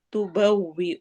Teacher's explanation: تبوئ حمزہ پہ جھٹکا دینا ہے